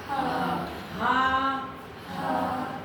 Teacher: ہا سینے سے نکلنے والا چھوٹا ہا جس کو ہم بولتے ہیں